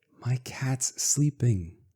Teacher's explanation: These are the same S sounds, so we just keep pronouncing S.